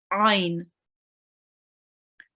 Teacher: Ain, from the middle of your throat